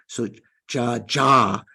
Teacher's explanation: Except, but one of the problems in the FTNT book is that, like, for instance, we have kaka ga ga nga, cha cha ja ja nya. So the ja, like we would write in Roman characters, we would write JHA, right? An aspirated ja.